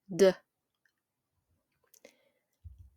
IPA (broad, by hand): d